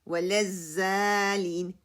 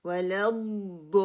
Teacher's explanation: ضاد کو ہیوی کرنا ہے 6 کاؤنٹ کرنا ہے. لام کی شدہ کو میں نے پکڑ کے رکھنا ہے. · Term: ضاد ہیوی